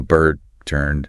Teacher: In non-rhotic British English, since the is silent, you just get a long, steady vowel sound · The absence of the R makes the vowel sound longer and purer